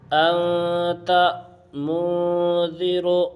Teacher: انت میں جو یہ نون کی آواز جو ناک میں چھپ رہی ہے، اسی چھپانے کا نام اخفاء ہے۔ اسی طرح منذر میں یہ جو یہ آواز ہے، اسی چھپانے کا نام ہی اخفاء ہے۔ · نون ساکن یا تنوین کی آواز کو ناک میں 1 الف کے برابر چھپا کر پڑھیں گے